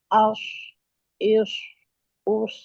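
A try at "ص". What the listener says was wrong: Itu di sini, bukan di sini huruf sod. As, is, us, bukan begitu. Enggak, itu dia kesini dia itu udaranya itu. itu yang salah. Itu yang salah. Ibu tadi udaranya ke sini. Ini nih.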